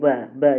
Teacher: ब यानी आपका दोनों होठ टच हो रहा है। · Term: ओष्ठ